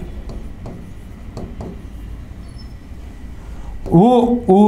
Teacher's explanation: ఉ ఊ అనేవి ఓష్ట్యాలు అంటే పెదవుల నుంచి పుడతాయి